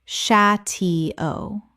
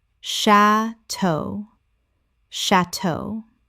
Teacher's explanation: Two syllables with the stress on the second from French.